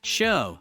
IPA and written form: ʃəʊ (show)